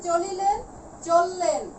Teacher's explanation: আবার এক্ষেত্রে দেখো হয়েছে কি চলিলেন চললেন, এখান থেকে কিন্তু ই ধ্বনিটি বাদ করেছে, রস্বই ধ্বনিটি